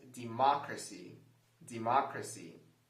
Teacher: the correct answer for this word is the second pronunciation where we stress the second syllable